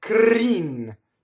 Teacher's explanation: The R rolls because it touches a consonant.